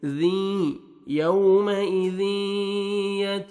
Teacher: तनवीन के बाद हरूफ यरमलून में से या आ रहा है, यहाँ पे इदगाम करेंगे गुन्ना के साथ, नोज में साउंड लेके जाएंगे। ज़ी यौमइज़ि यत, ता को बारीक पढ़ेंगे, यत, जाल को भी बारीक पढ़ेंगे ताकि जा में आपका साउंड मिक्स नहीं होना चाहिए।